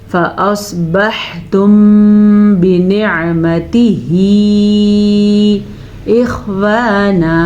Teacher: فأصبحتم بنعمته اخوانا، فأصبحتم، سواد کو پر پڑا، حا کے مخرج کا دھیان رکھا. میم ساکن کے بعد حرف با آیا ہوا ہے تو اخفاء شفوی کا قاعدہ ہوگا، ہونٹ بند ہو جائیں گے.